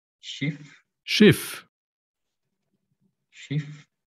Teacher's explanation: SCH se pronuncia como una S silbante.